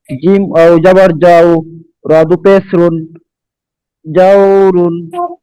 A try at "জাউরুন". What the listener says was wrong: টান হবে না তো। জিম ওয়াও জবর যাও, র দুই পেশ রুন, জাউরুন। অফ করিলে জাউর।